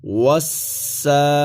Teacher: سین کے اوپر کھڑی زبر ہے، سین پر کھڑی زبر ہے، کھڑی زبر کی وجہ سے ایک الف کی مقدار سین کو کھینچ کر کے پڑھا جائے گا، اور کھڑی زبر کے ساتھ ساتھ سین پر شد بھی ہے، جس کی وجہ سے سین کو سختی کے ساتھ اور زور دے کر کے پڑھا جائے گا · واو سین زبر وس، سین کھڑی زبر سا، واو سین زبر والسین کھڑی زبر سا، وسا، واو پر زبر ہے، واو پر زبر ہے، اور واو کو ادا کرتے وقت ہونٹوں کو گول کیا جائے گا، اور اس کے بعد سین ہے، سین کو نکالتے وقت سیٹی کی آواز آنی چاہیے